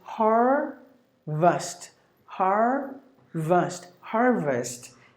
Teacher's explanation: So here you got only 2 syllables. If you go to the American way, the letter R is pronounced. They pronounce all the letter R's.